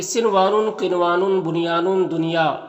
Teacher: और यहां पर सनवानुन सनवानु देखिए सवानुन किनवानुन बुनियानुन दुनिया दुनिया दुनिया ये चार हुरूफ वो है जिसके नून में इजहार मुतलक होता है यानी नून को जाहिर करके जल्द पढ़ते हैं